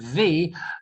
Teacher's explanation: When you do the sound V, there's a vibration. So teeth on the bottom lip.